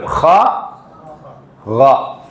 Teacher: ഖാന്റെ മഖ്റജ് തൊണ്ടയുടെ മേലേറ്റം